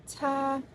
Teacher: konsonan paduan, apikodental, tak bersuara, beraspirasi